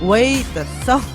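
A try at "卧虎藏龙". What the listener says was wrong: 더가 너무 내려가잖아.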